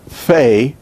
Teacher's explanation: your your lower lip goes against your teeth fae fei but in hebrew it is pronounced using both lips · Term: bilabial fricative